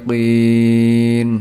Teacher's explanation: Huruf sh di sini dibaca panjang untuk satu alif atau dua harakat. Terakhir, huruf qin dibaca panjang sebanyak tiga alif atau enam harakat